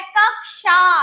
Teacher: का और श का षटकोण वाले श का साउंड सुनाई देता है